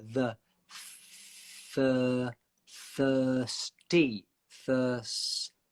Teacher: So your tongue goes from between your teeth to inside and up to get the S sound. Thirst. And remember, the tongue between the teeth is so short with the th.